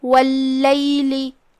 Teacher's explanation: ال شمسیہ ہے، لہذا ہم تشدید کو ظاہر کریں گے اور لام کو 2 حرف کے مقدار میں ادا کریں گے۔ واللیل، اور یہ کلمہ کے آخری میں لام کے نیچے زیر ہے، تو اس کا دھیان رہے۔